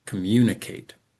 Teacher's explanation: We tend to stress in this word, the second and then the last syllable, communicate. And the comm and the I are weaker.